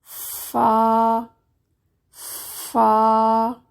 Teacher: فا، فا نرم حرف ہے، نیچے والے ہونٹ کا درمیانی حصہ جب اوپر والے دو دانتوں کے کناروں سے لگتا ہے تو ادا ہوتا ہے، اس میں سانس جاری رہتا ہے۔ سانس کے بغیر یہ حرف پڑھا ہی نہیں جاتا۔